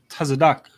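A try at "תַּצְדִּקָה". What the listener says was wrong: And then it has that H at the end, so it's Tazadaka. Tazadaka.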